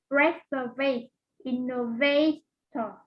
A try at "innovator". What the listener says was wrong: Yes, very good. Innovator.